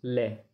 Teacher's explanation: पार्श्विक जीभ के दोनों साइडों से हवा वायु निकल रही थी